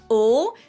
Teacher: Now in English there are two different L sounds, a dark L that is pronounced more in the back of your throat